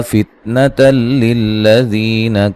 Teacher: یہ نون تنوین کا ادغام ہے، بلا غنہ، غنہ نہیں کریں گے، ٹھیک ہے، ادھر دیر نہیں لگانی۔